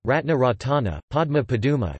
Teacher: Sequences of stop + nasal are sometimes separated by a or u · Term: epenthetic vowel